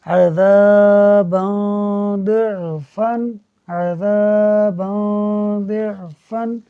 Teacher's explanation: نون ہے اس کو نہیں پڑھیں گے بلکہ اخفا کریں گے، چھپا دیں گے